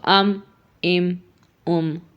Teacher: ہونٹوں کا جو خشک پارٹ ہے، جو خشک حصہ ہے، ان کے آپس میں ملنے سے میم ادا ہوتا ہے